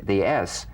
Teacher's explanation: sounds like the kettle's boiling the s cognate to the z unvoiced s sound fricative tongue to gum ridge